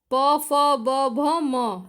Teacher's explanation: प, फ, ब, भ, म, सिर्फ होठों को स्पर्श कर रहे हैं। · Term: प वर्ग